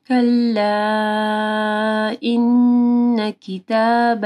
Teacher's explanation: مد ہے، اس کے بعد حمزہ ہے، 4 سے 5 حرکات کے برابر لمبا کرنا ہے